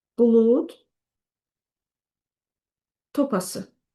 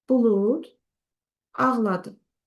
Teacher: amma sait gələndə cingitli samit olduğu kimi qalacaq